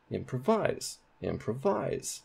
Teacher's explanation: sounds really weird but that is primary stress on pro now let's put primary stress on wise